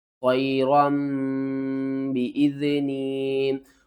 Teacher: جب بھی نون ساکن یا تنوین کے بعد اگلا حرف با آ جائے تو ہم ان کی آواز کو میم کی آواز میں بدل کر پڑھتے ہیں۔